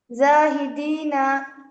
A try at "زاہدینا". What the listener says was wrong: نہیں کھینچنا ہے. زاہدین.